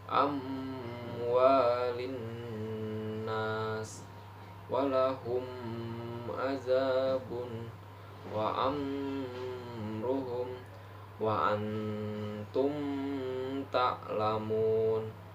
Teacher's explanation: cara membaca membunyikan mim sukun secara terang di bibir dan mulut tertutup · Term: izhar syafawi, izhar safawi